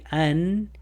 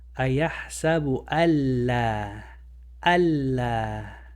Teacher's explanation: The lam is one of the letters of idgham. So the lam is going to eat the noon. So you're not going to say an, you're going to say al.